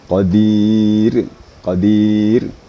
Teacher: Harus kedengaran getaran dua getaran tapi tidak boleh dari dari lebih dari dua ya Qadir Qadir